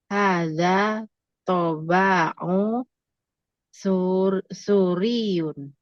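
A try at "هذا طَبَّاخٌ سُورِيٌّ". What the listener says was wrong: tabaun tanwin un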